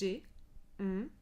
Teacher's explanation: Si vous faites les consonnes M, N et ng, hm, ces consones-là ferme l'accès à la bouche et du coup, on a une résonance qui est entièrement dans le nez